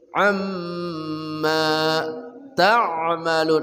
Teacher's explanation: mim batasyid wajib dengung